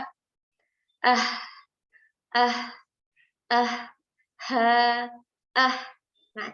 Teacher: sini di pita suara kita begitu juga huruf yang kedua adalah huruf H ah ah itu juga keluar dari pita suara